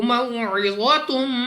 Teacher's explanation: واو ساکن سے پہلے زبر واو لین بغیر کھینچے بغیر جھٹکا دیا پڑھیں گے